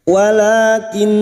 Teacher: nun dengan shaddah, ghunnah musyaddadah, kita senandungkan tiga harakat